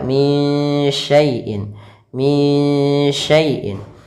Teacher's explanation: samarkan suara nunnya kepada huruf shin